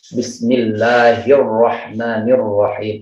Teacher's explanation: Ro bertasydid itu getarannya lebih disembunyikan